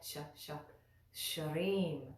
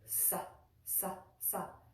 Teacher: But this does not have that diacritical mark, so it's pronounced differently. Instead of sh, it's pronounced sa, sa, sa.